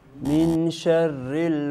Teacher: sebab ikhfak dan dengung mesti dua harakat